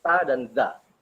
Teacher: sa dengan za itu sama-sama cara mengucapkannya itu keluar dari punggung ujung lidah bertemu ujung gigi seri atas